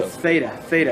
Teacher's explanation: it's like a dental that doesn't have a hard stop to it